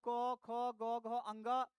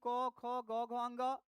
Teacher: क वर्ग का मतलब क, ख, ग, घ, अंग, ये सारे जो है कंठ से बोले जाते हैं।